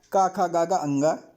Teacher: कंठ से का वर्ग हो जाएगा